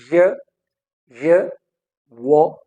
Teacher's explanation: your tongue is in motion, your tongue is in motion, your tongue is gliding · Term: glides